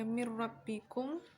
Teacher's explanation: terdapat bacaan idgham bila gunnah, yaitu nun sukun bertemu dengan ra. Mim nun sukun atau nun mati bertemu dengan ra.